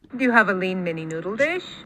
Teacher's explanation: She sort of really bounces or lands on that lean, right?